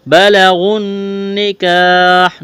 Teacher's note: اس واو اور الف کو نہیں پڑھیں گے، غین کو نون کے ساتھ ملانا ہے۔ بلغن نکاح، نون مشدد ہے، آواز ناک میں چھپائیں گے، غنہ کریں گے۔ کاف کو باریک کرنا ہے، الف مدہ ہے، ایک الف کے برابر کھینچنا ہے۔